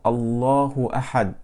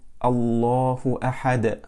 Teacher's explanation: Al-qalqala or the echoing of the letter dal was not done.